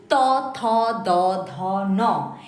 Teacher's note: এরপর আসি ত থ দ ধ ন এটা উচ্চারণ করতে গেলে জিহবার অগ্রভাগ দাঁতের গোড়াকে স্পর্শ করছে সেজন্যকে দন্ত বর্ণ বলা হয়